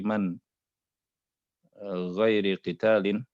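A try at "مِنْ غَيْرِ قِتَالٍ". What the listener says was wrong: Wal fai'u ma ukhidha minal kuffari bihaqqin min ghairi qitalin. Bukan man, tapi min.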